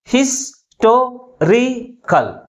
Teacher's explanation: But which syllable is pronounced with a greater force? That is, third syllable from the last is pronounced with a greater force compared with other syllables. And also this word ends with ICAL suffix. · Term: primary stress